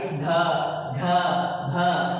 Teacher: ये भ में ह साउंड है, ये वोकल साउंड है, गले से निकलने वाला साउंड है, स्ट्रेचिंग साउंड है, इसी साउंड को हम लोग कहते हैं एस्पिरेशन।